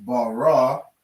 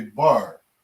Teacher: so instead of saying ba ra right these connect so we just say bar all right we drop that that last syllable on the raw · we drop that last syllable on the ra